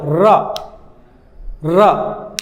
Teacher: जीभ ऊपर की ओर उठेगा और कंपन होगा, र र, ठीक है। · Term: लुंठित वर्ण